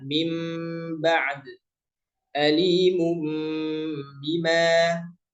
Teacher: saat kita membaca maka ditahan durasinya dua harakat ya disebutnya dua harakat ghunah · Ya, jadi hanya pelafalan yang dirubah. tulisannya tetap nun yang bertemu dengan ba, tapi secara pelafalannya nun diubah atau diganti menjadi huruf mim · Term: iqlab